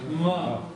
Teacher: Теперь еще надо помнить, что это у нас низкий тон.